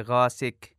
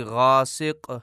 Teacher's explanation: غاسق میں قاف کو باریک پڑھا جاتا ہے